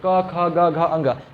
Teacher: आपका जीभ किन्नू नहीं टकराएगा। सारा आवाज कंठ से ही फील होगा